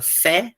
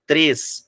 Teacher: a palavra fé, que é aberta, a palavra três, que é fechado